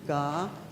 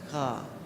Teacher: Ga is a regular G, and then the guttural G